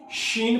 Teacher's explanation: شین پہ آواز پھیلنی چاہیے، تفشی، شین اچھی طرح کر کے ادا کرانی ہے۔